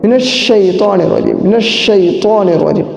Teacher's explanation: شین جو ہے اس کے اندر آواز پورے منہ کے اندر پھیل جاتی ہے